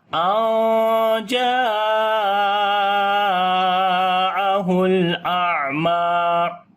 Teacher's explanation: جیم کو لمبا کریں گے، یہاں پر الف مدہ ہے اور بڑی مد بھی ہے، مد متصل، 3 سے 4 الف یہاں پر لمبا کرتے ہیں